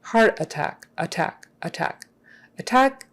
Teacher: the emphasis is on the last syllable attack